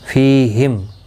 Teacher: فی یا مدہ ہے، ایک الف کی مقدار کے برابر کھینچ کر پڑھیں گے۔ فیہم، میم ساکن کے بعد حمزہ آیا ہے، اظہار شفوی ہوگا، گنہ نہیں ہوگا